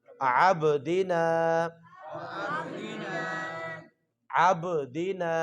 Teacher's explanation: جہاں پہ با ساکن ہو، با کے اوپر ساکن جزم ہو، حرکت نہ ہو، تو وہاں پہ کیا کریں گے؟ قلقلہ کریں گے